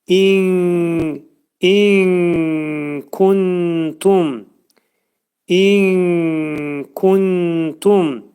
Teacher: Üç saniyə müddətində nunu kəfin məxrəcində gizlədirik. · Kuntumda nun hərfi təyə yetişir. İxva eləyirik.